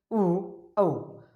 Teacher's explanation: उ और औ जो होता है होठों से उच्चारित होते हैं